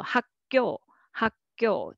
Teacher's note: without pausing it is hard to make a soft ㄱ sound. You will naturally pronounce it tense